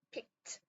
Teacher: 근데 이 규칙에 의해서 ed, 이 과거형의 ed, 이거 앞에 있는 바로 앞에 있는 얘의 소리가 라는 소리가 무성음이니까 t 소리를 내야겠다.